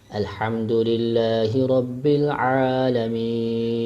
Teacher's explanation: رب قلقلے کے ساتھ نہیں پڑھیں گے، بغیر قلقلے کے